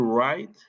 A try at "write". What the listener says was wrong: No pronunciamos la W, es right.